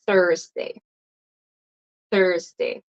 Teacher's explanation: It's not Thursday. It's tongue between your teeth, Thursday.